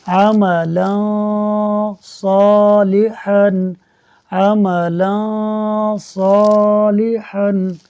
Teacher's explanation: دو زبر کی تنوین کے بعد صاد حروف اخفاء میں سے ہے، لہٰذا اخفاء ہوگا، یعنی غنہ کریں گے